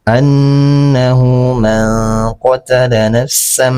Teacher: Cara membacanya tanwinnya berubah menjadi mim. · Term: iqlab